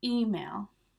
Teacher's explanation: So we're stressing the E.